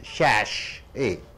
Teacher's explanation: Two sounds are there, two syllables. The first syllable should be stressed.